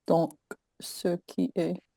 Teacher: she does pronounce it as ski and not two syllables